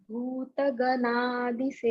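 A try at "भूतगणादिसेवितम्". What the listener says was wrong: Not Gana. Take your tongue to the top of your palate. Ganadi Se. You're still touching your teeth. Ana. Say Ana. Ganadi.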